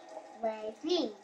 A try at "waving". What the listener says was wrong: The E, she's pronouncing it.